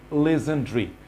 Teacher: এখানে ডারি না বলে বলতে হবে ড্রি, legendary.